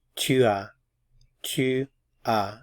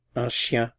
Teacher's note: Notice I'm not pronouncing the S at the end of the syllable.